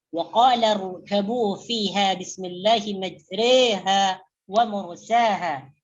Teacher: imalah kubra adalah bacaan yang condong ke bacaan baris bawah seperti sebutan bahasa Inggris re · mencenderungkan bacaan fathah kepada kasrah atau alif kepada iya